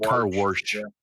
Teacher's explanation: In St. Louis, a lot of people add Rs where there aren't